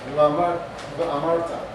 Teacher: You can kind of get it by being in between the V and the W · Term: soft V